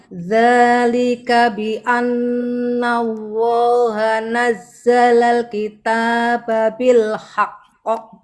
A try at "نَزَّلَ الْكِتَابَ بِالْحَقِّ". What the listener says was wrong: Cara mensukunkannya jangan buru-buru. Nazzalal kita disempurnakan dulu sukunnya. Bil haqqo itu.